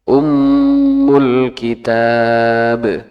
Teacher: itu mimnya kan bertasdid. Itu bisa sampai 4 harokat panjangnya.